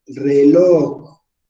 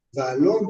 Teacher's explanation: Muy bien, entonces dice que las palabras agudas son las polisílabas, cuya última sílaba es tónica. Es decir, en la última sílaba, ahí está la fuerza de voz